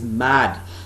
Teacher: it starts with bilabial sound which is a nasal sound